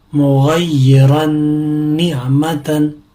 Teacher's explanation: میم پیش مو غین یا زبر غی یا زیر ی مغی را نون دو زبر رن نون عین زیر نع میم زبر ما تا دو زبر تن مغیرن نعمتن ادغام مال غنہ. کیونکہ تنوین کے بعد نون آیا ہے اور نون ینمو کے حروف میں سے ایک حرف ہے اس لیے غنہ ہوگا